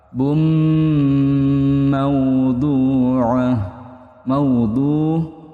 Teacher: Domahin bertemu dengan mim. Hukumnya idgham bighunah dengan dengung. Nah, seperti itu didengungkan dipanjangkan dua harakat.